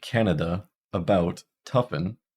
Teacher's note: this is the mid Central unrounded reduced vowel